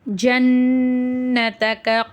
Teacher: நூன் மேல ஷத் இருக்கு குன்னா செஞ்சு ஓதணும்